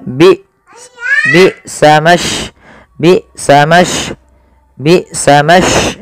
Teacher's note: Maka ketika hamzah sukun harus ada penahanan suara dan penahanan nafasnya.